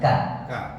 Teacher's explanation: k-nya jangan terlalu deres desisnya biasa aja Ka bukan ka ka ka ka ka enggak kecilkan lagi ka